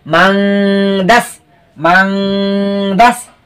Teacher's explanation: এখানে গোপন করে গুণনা করে পড়তে হবে। মিম নুন জবর মান, দিন ডাল সিন জবর দাস।